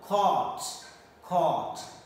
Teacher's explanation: this is long O, round lip position, and long O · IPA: ɔː